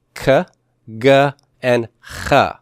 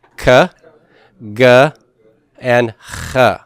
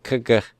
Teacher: That's the velar region. And these are where the back of our tongue lifts up to make contact with that velar area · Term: velars